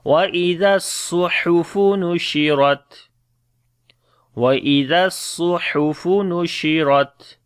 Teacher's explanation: the Ra we read in heavy sound and the Ta we make Shiddat and Hams quality again.